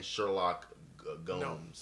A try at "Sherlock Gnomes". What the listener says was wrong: Sherlock Gnomes. The G is silent. The G is silent.